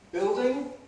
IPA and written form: ˈbɪɫdɪŋ (building)